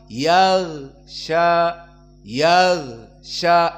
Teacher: Meskipun tidak ada udara yang keluar, namun gho dipanjangkan karena ada suara di saat disukunkan. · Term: rohawah